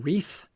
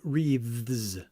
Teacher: One wreath unvoiced th at the end and two wreaths with a voiced at the end